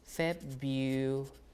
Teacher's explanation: So people drop one R and just say February like that. Because there are two R's here. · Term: dissimulation